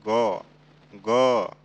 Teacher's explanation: जैसे ग ग, देखिए ख ग ख ग, ख और ग में अंतर ये है, ग में कंपन कर रहा है गला और ख में नहीं कर रहा है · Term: घोष